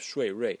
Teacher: So the final is resembles 100%. The tone is the same. The vowels that we have in the final are the same.